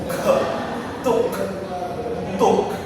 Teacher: So, the first, the pronunciation of k in the word tuk, it is normal, voiceless, velar, and stop.